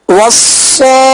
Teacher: صاد کو سٹی کی آواز میں پڑھیں گے اور پر پڑھیں گے، موٹا پڑھیں گے، اس لیے کہ حروف مستعلیہ میں سے ہیں.